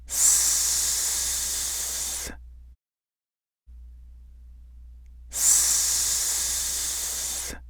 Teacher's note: The /s/ is a fricative which is made by continuously blowing out air through a narrow constriction in your mouth formed by the tongue.